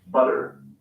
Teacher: in the u.s they sometimes sound like an alveolar tap instead of an alveolar stalk this normally occurs in an unstressed